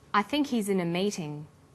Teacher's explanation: the word think is stressed in this sentence and his is unstressed when these words are linked the her is dropped in spoken